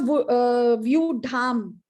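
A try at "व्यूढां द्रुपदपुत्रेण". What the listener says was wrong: In your view, it's Vyudhan. Why Vyudhan? Vyudhan drupada putrena. Allow the, just pronounce the nasal word, the nasal sound as the next letter. So you don't have to really think about it too much. Just pronounce it as the next letter that is coming up, right?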